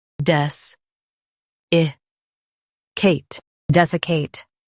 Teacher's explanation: Stress des and keep I light.